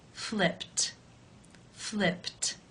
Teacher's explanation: In the infinitive, the final sound of the verb is p, which is unvoiced. Therefore, it is case 1, and the ed is pronounced as a t. Flipped, flipped.